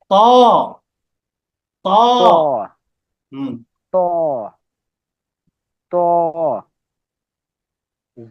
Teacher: ত ত আছে ত দ ত ছোট গোল হবে না ত জিহ্বার আগাটা উপরে দুই দাঁতের আগাতে গোড়াতে লাগবে